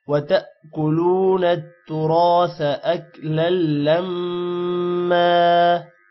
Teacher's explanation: اور نَتُّرَاثَ نون تا کے ساتھ ملے گا شد کی وجہ سے. تُرَاثَ را موٹا ہوگا اور الف آ رہا ہے جس کی وجہ سے تھوڑا لمبا کریں گے. یہاں پر سا ہے، سا کو آپ نے سین نہیں پڑھنا، سا اور سین میں ڈفرنس رکھنا ہے.